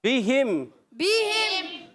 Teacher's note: با کے نیچے زیر ہے، با کو نہیں کھینچیں گے